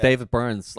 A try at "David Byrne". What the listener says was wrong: You said Burns. No I didn't. Did you put an S in?